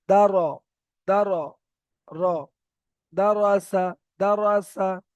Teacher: তাহলে এখানে র এর উপরে যাবার আছে তাই র পুর হয়ে যাচ্ছে, অর্থাৎ মুখ গোল করে পড়তে হচ্ছে।